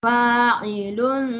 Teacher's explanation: Lun tu ada dengung sedikit ya. Kalau boleh panjang sedikit.